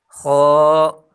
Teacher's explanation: اس کو پر پڑھیں گے یعنی موٹا پڑھیں گے، اور موٹے حروف کو ادا کرتے وقت ہونٹوں کو گول بالکل نہیں کرنا.